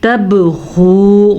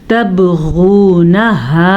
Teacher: غین کو پر پڑھیں گے اور واو مدہ کے ساتھ پڑھیں گے